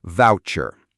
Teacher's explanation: The stress is on the first syllable. Voucher. The u sound is like in the word out or about.